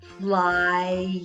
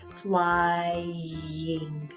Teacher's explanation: If I say it slowly, you can hear the I. You can also hear the glide. Flying. It sounds like a y too.